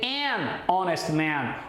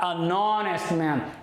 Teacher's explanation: esse H de honest, esse H é mudo, por isso que o an vai se combinar com o O, que vem depois desse H que não existe.